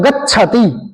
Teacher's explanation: गच्छ वो छ पे बल देना है